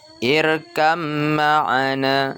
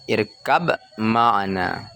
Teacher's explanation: huruf ba yang bertanda sukun tidak kedengaran, tapi dia ditasdidkan ke huruf mim